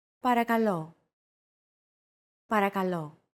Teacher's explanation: make sure to stress that final syllable with the accent mark